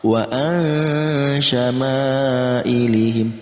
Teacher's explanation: ada mad tabi'i bertemu dengan hamzah di satu kata atau terdapat dalam kata yang sama. Asyama'ilihim kita baca 4-5 harakat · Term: mad wajib muttasil